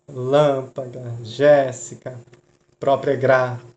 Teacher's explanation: Proparoxígeno. Sílaba mais forte é a mais afastada da última.